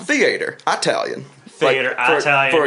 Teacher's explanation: put the accent on the first syllable